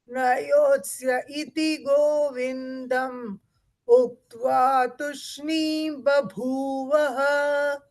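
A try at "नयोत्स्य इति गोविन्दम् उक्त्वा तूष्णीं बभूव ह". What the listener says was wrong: Tushni. Tu is dirgha.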